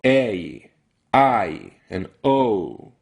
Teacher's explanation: three of them a I and O are actually diphthong they're not single vowels at all in American English at least we go a I and O